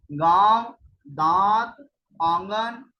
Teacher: अनुनासिक स्वरों के उच्चारण में वायु ध्वनि मुख के साथ साथ नाक से भी निकलती जैसे गांव, दांत, आंगन इत्यादि।